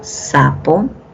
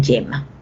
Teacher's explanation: Y estas fricativas ya se va a dar el sonido, ya no hay un cierre total, sino más bien el cierre es parcial.